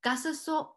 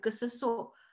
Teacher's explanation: Gasaso with the high tone means to think, but gasaso with the falling tone means be alive